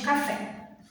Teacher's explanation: aquela sílaba que é mais forte, que é o fé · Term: sílaba tônica